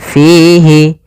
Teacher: Kemudian fihi, di sini ada mad tabi'i, yaitu adanya kasrah bertemu ya sukun, panjangnya 2 harokat.